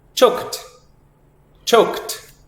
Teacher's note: the ED sound here sounds like a T. So we say choke and add the T sound.